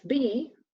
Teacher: we have the same thing as P in voiced form